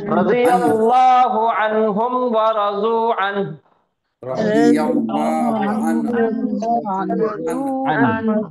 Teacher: تو اب یہ نون ساکن اور یہ ہا ساکن، یعنی کہ نون پڑھنے کے بعد ہا کی آواز کو سینے کے اندر ڈھکلنا ہے